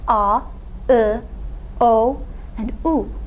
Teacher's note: The first category, we're going to call "back" or "a" vowels These vowels are called back vowels because they're articulated in the back of your mouth · These vowels are called back vowels because they're articulated in the back of your mouth. And we can also call them a vowels because in two-way vowel harmony, they're going to harmonize best, be considered most similar to a.